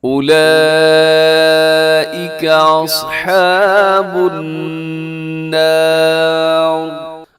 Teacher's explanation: اور النار یہاں پر نون مشدد کی وجہ سے غنہ ہے، اور آخر میں جو را لکھی ہوئی ہے را موٹی پڑی جائے گی